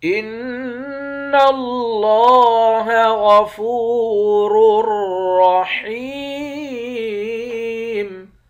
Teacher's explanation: فا کو واو کے ساتھ ملا کر واو کو ایک الف کے مقدار کھینچ کر پڑھیں گے، واو حرف مدہ ہے۔ · نون مشدد پر غنہ کریں گے، نون کو لفظ اللہ کے لام کے ساتھ ملا کر لفظ اللہ کے لام کو موٹا پڑھیں گے۔